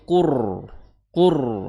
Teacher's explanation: bukan quran tapi qur qur tebal. Jadi rnya itu tebal ya. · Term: ro tebal